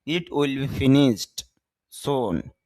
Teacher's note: ইট উইল বি ফিনিশড, এখানে স sound, S এর পরে এস থাকলে স হয়, আর স সাউন্ডের পরে যখন ইডি যুক্ত হয়, ড যুক্ত হয়, ডি যুক্ত হয়, তখন ডি এর উচ্চারণটা ড না হয়ে ট হয়।